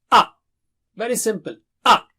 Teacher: A is from the lower part of the throat.